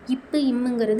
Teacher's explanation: இப்பு, இம்முங்கிறது உதடும் கீழ் உதடும். மேல் உதடும் கீழ் உதடும் பொருந்துவதால்